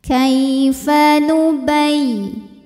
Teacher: Ada ya tasydid dibaca dengan menggunakan nabar. Jadi kita tinggikan atau kita naikkan intonasinya